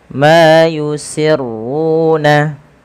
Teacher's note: ma di sini dipanjangkan 2 harakat, yusirruna, ru-nya tebalkan, yusirruna. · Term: mad tabi'i